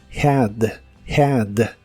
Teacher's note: La H se pronuncia como una J suave.